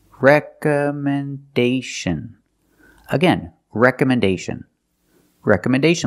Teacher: the fourth syllable is stressed